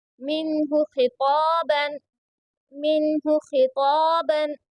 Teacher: خا کو پر پڑھیں گے اور طا کو پر پڑھیں گے کیونکہ یہ دونوں حروف مستعلیہ کے حرفوں میں سے ہے اس لیے یہاں پر پر یعنی موٹا پڑھا جائے گا. خا اور طا کو یہاں پر الف مدہ ہو رہا ہے کیونکہ الف سے پہلے طا کے اوپر زبر ہے اس لیے یہاں پر الف مدہ ہو رہا ہے اور اسی لیے اس کو تھوڑا کھینچ کر پڑھیں گے.